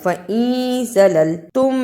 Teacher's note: نون ساکن کے بعد زا ہے، یہ اخفا کا لفظ ہے، نون ساکن کی آواز کو چھپا کے پڑھنا ہے۔